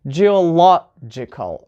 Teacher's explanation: so stress is on the third from the end